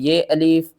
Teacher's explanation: میم کو ہم نے شین سے ملانا ہے، درمیان میں یہ الف اور یہ لام، ان تینوں کو آپ نے چھوڑ دینا ہے۔ شین کو بھی 2 بار پڑھنا ہے اور سختی کے ساتھ پڑھنا ہے۔